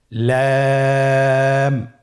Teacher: লাম হরফটির মাখরাজ হলো জিহ্বার আগার কিনারা উপরের দাঁতের মাড়ির সঙ্গে লাগিয়ে উচ্চারিত হয়